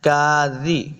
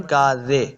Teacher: کاذی، بعض لوگ پڑھتے ہیں کاذے، زے نہیں کرنا، زال زیر زی ہوتا ہے، نرمی کے ساتھ پڑھیں گے